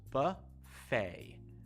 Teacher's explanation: you don't say the T at the end of the word, just buffet, almost like F-A-Y. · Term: silent T